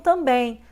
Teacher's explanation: o M tem som de I e o som fica nasal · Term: ditongo nasal